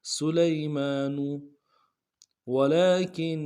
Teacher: کاف کو نون کے سامنے لانا ہے، نون کے اوپر تشدید زور دیں گے، اور نون کو آگے شین کے سامنے لانا ہے، شین کے اوپر تشدید زور دیں گے۔